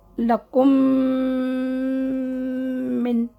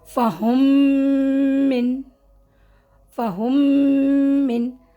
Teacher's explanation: ٹھیک ہے، شد کے ساتھ ہوگا، یعنی تشدید کے ساتھ ہوگا، اور دونوں کو مرج کریں گے تو شدت سے پڑھیں گے، اور گنہ بھی رکھیں گے 2 کاؤنٹ تک ناک میں